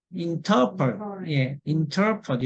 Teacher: INT에도 강세가 있으면 터로 발음 납니다